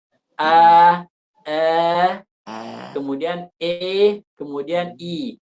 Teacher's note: ketika mengucapkan Alif posisi lidah normal kemudian makin lama makin naik sampai terucap huruf ya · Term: imalah